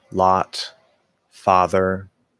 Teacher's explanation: in the way that i speak and the way that many people speak with the merger all of those words just use one sound ah